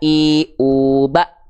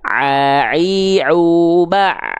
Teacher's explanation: Kalau Ain dia ngalir sedikit suaranya di tengah tenggorokan.